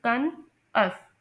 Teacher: तो इसमें फर्स्ट और लास्ट सेलेबल जो हैं वो अनस्ट्रेस्ड हैं